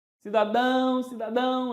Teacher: Cidadão, oxítona. As palavras oxítonas, então, a sílaba forte na última sílaba.